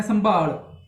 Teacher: ਸੋ ਸੰਭਾਲ ਦੇ ਵਿੱਚ ਵੀ ਹੁਣ ਜੇ ਆਪਾਂ ਗੱਲ ਕਰੀਏ ਤਾਂ ਜੋ ਮੀਮ ਦੀ ਆਵਾਜ਼ ਹੈ ਉਹ ਪੂਰੀ ਨਹੀਂ ਆ ਰਹੀ, ਉਹ ਅਚਾਨਕ ਆ ਰਹੀ ਹੈ, ਥੋੜੀ ਆ ਰਹੀ